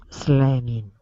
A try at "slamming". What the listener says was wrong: perfect great job